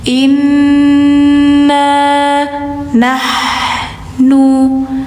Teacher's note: Inna, nun bertasdid, dengung dulu baru panjang.